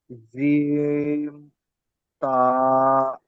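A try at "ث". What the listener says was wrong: জি না, তাহলে দুটো নক্তা হতো, তিনটে নক্তা আছে তাহলে কি হবে?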